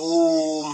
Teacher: जिसका उच्चारण अन्य वर्णों की अपेक्षा 3 गुना समय लगता है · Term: पलूत